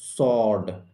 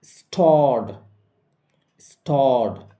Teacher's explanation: অ sound এরপরে ইডি রয়েছে, তাই এই ইডির উচ্চারণ হবে ড এর মতো